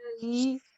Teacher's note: قليلًا في مخرج البس عفوًا في مخرج اللام المفتوحة وتشبعي الألف المادية. قفي قليلًا حتى تشبعي الألف المادية بحركتين